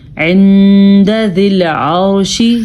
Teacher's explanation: یہاں پہ ہم نے اخفاء کیا ہے کیونکہ نون ساکن ہے اور اس کے بعد دال ہے